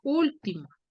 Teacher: 3 sílabas. ¿Dónde tiene la mayor fuerza de voz? En la U. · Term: Esdrújula